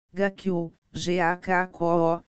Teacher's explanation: A pausa, uma mora especial, tem comprimento como se houvesse uma consoante adicional.